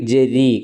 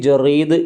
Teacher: റാഇന് കസർ വരുമ്പോൾ തർക്കീക് ആയിരിക്കും അഥവാ രീ എന്ന ശബ്ദം ആയിരിക്കും